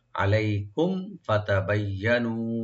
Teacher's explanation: মিম সাকিন এখানে বিশেষ করে এজাহার করবেন, আমরা আগে সাকিনটা স্পষ্ট করে করব। আলাইকুম ফাতাবাইয়ানু, ফাতাবাইয়ানু, ফাতা বা এখানে তিনটা আমরা ওপেন করে পড়ব।